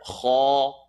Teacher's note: Kha is the third part of the throat, heavy letter.